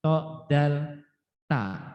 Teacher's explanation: ujung lidah bertemu dengan pangkal gigi seri atas, itu adalah to, dal, ta.